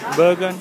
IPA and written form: ˈbærɡən (Bergen)